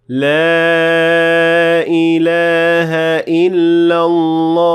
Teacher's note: Then it would be justified because it would then be mad arid lissukun, and it can be extended for up to 6 counts